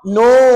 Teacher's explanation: Sebut nun 6 harakat. Dah cukup. Jangan terlajak. Pastikan 6 second.